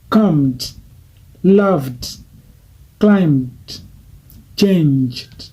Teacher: Au niveau des voice, comme ça sonne fort, on dit D.